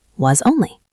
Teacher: And was connects to only, was only. Since was ends in a Z sound and only starts with a vowel, they slide together, was only. Let's try that. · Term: connected speech